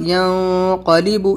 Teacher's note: इख्फा letter है तो वहाँ पर नून की आवाज़ को नाक में छिपाकर पढ़ेंगे, इख्फा करेंगे